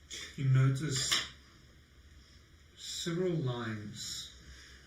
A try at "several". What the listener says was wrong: Several, not seven.